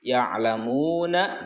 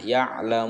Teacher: jadi karena berhenti maka disukunkan huruf terakhirnya. Ya'lamun, boleh 2, boleh 4, boleh 6 harokat cara membacanya. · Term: mad arid li sukun